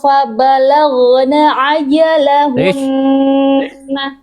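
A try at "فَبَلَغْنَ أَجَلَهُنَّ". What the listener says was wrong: Jangan jadi ain. Ini huruf apa Bunda ini? Hamzah. Bunda tadi fabalaghna ajalahun. Hamzah ya.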